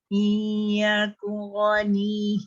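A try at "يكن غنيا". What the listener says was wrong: Kun. Dia cepat sangat. Dia tak boleh cepat. Dia mesti izhar ni sebenarnya susah tau bagi saya sebabnya nak meletakkan secara tepat tu macam mana Kalau dengung senang. Izhar ni kena sebut terang jelas dan nyata.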